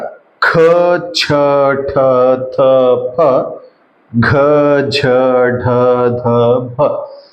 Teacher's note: ನಾವು ಜಾಸ್ತಿ ಉಸಿರು ಕೊಟ್ಟು ಹೇಳ್ತಿದ್ದೇವೆ ಸೊ ಹಂಗಾಗಿ ನಾವು ಮಹಾಪ್ರಾಣಾಕ್ಷರಗಳು ಅಂತ ಹೇಳಿ ಹೇಳ್ತಿವಿ